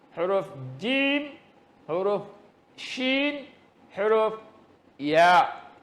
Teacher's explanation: Makhrajnya tengah lidah. Tengah lidah diangkat mengenakan langit-langit yang keras. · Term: syajariyah